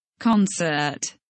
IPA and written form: ˈkɒnsət (Concert)